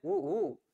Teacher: निघतात रे ओठातून निघतात दोन्ही स्वर कुठून निघतात ओठातून निघतात म्हणजे यांचं जर बघितलं उच्चार स्थान कुठे आहे तर ओष्ठ आहे